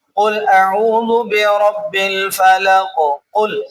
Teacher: قاف موٹے حروف میں سے ہے، تو اس کو موٹا کریں گے تب یہ اپنے مخرج سے بھی ادا ہوگا